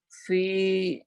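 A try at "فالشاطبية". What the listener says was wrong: Fa, ini bukan fi. fa baru fi. Ini enggak ada ya-nya.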